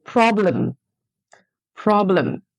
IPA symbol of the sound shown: ə